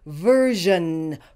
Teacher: say this word some people say versen some people say verun in this word the SI is pronounced as a zh that is an sh with a voice